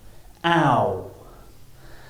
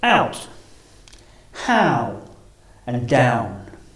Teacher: this is a combination of ah and uh now our mouth is closing and the shape of the ellipse